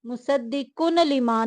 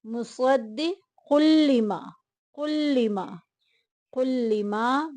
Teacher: مصدقن لما نہیں پڑھنا، کن نون کی آواز آ رہی ہے نا، جب ہم نے ملانا ہے تو نون کی آواز کو لام کے ساتھ ملا دینا ہے۔